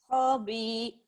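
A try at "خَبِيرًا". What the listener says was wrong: Oh, ya betul, tapi ho-nya pendek. Iya benar, B-nya panjang. Khabira.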